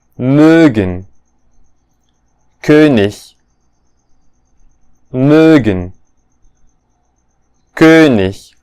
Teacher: this is simply the rounded version of E.